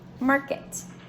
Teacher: Now, a lot of time our R-controlled vowels are A-R, E-I, I-R, O-R, U-R, and they all make that sound or R, but you only hear one sound. You hear the R sound. You don't hear the vowel. So this is when a syllable has a vowel with an R following it.